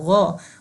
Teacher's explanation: غائن کی آواز ہوتی ہے غو، غائن کی آواز خا نہیں ہوتی، نہ کھا ہوتی ہے